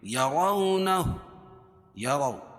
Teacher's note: واو ساکن سے پہلے زبر ہو تو واولین اس کو نرم آواز کے ساتھ جلدی ادا کریں گے. اور را کے اوپر زبر یہ پیش ہو تو را پور ہوتی ہے، تو را کے اوپر یہاں زبر ہے.